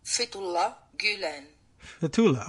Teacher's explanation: Fethullah, I guess, would be the emphasis on the first syllable.